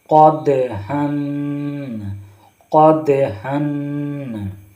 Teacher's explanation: قاف دال زبر قد، یہاں دال پر جزم ہے اور قطب و زدین میں سے ہے، یعنی قلقلہ دال پر قلقلہ کریں گے، دال پر قلقلہ کریں گے، جنبش دیں گے، تھوڑا ہلائیں گے